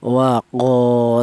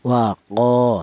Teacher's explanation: Ini dibaca mad thobi'i. Panjangnya yaitu satu alif atau dua harakat atau dua ketukan.